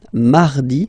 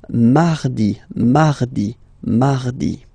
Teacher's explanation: you can hear that you don't pronounce it that strongly, this R